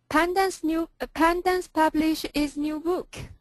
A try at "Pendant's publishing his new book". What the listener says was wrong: Get the ing.